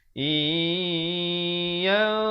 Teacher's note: nun mati bertemu ya, idgham bi gunnah masuk beserta dengung 2 harakat. Asalnya in, tapi di sini kena baca iya.